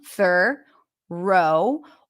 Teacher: So the first syllable is the stir sound, thorough, or you can just pronounce it with a schwa